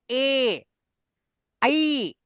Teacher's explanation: ए और ऐ इनका उच्चारण स्थान कंठ और तालु दोनों हैं। इसलिए इनको कहते हैं कंठ तालव्य और ओतोह कंठोष्ठम ओत और औत माने ओ और औ जो है वह कंठ कंठ और ओष्ठ दोनों जगह से इनका उच्चारण होता है और क्यों होता है?